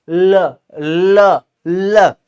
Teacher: इसी तरीके से जब हम बोलते हैं ल, ध्यान दीजिएगा, जब हम ल बोल रहे हैं प्यारे साथी, तो हमारी जीभ अर्ध चंद्राकार हो जाती है, पीछे से ल ल ल ऐसे बोलेंगे, जीभ अर्ध चंद्राकार हो जाएगी और जीभ के दोनों ही पार्श्वों से हवा रगड़ खा के बाहर निकलती है, दोनों पार्श्वों से टकरा के बाहर निकलेगी। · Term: पार्श्विक व्यंजन, पार्श्विक ध्वनि